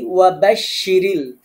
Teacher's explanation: বাশশি শিন জিহ্বার মাঝখানে শক্ত করে উচ্চারণ করবেন। রিল র বারিক বা পাতলা হবে।